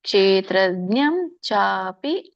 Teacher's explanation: ಚ ಅಪಿ ಅಂತ ಕೂಡಿ ಚಾಪಿ ಆಗುತ್ತೆ